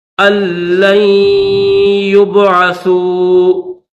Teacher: یہ جو لام ہے اس کو ڈائریکٹ یا کے ساتھ ملا دیں گے، یہاں پر صرف غنہ کریں گے، یا کو با کے ساتھ ملائیں گے۔